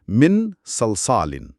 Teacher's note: آواز ناک میں چھپے گی اور ایک غنہ پیدا ہوگا